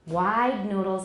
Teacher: Wide noodles, it's longer because duh is voiced.